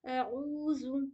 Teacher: اعوذ، عین کو اچھے سے ادا کریے گا آپ لوگ، عین حلق کے بیچ والے حصے سے نکالنے کی کوشش کریں گے